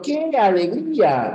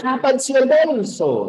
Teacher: Empieza con mucha fuerza y luego va bajando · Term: descendente